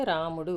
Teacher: ర కి దీర్ఘం ఉన్నది రెండు మాత్రల కాలంలో పలుకుతుంది రా అని ముడు ఒక్కొక్క మాత్ర కాలంలో పలుకుతుంది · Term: భగణం